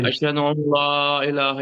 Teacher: नून की हल्की सी जो नून गुन्ना की आवाज सी होती है उसे आप निकाल सकते हैं